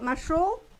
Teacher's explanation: Entonces, yo sé que, por ejemplo, masho no obedece, no está obedeciendo a la regla, porque la segunda sílaba lleva la fuerza de pronunciación a pesar de ser abierta